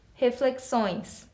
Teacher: Eu tenho aí um som nasal em cima do O